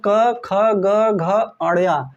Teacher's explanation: जो क वर्ग है उसका उच्चारण स्थान कंठ से होता है। कंठ मतलब क ख ग घ अड़या।